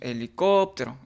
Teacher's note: De la misma manera decimos en la palabra helicóptero, decimos helicóptero, aplicamos la técnica, la metodología de la entonación y de esta manera podemos encontrar que la sílaba tónica es COP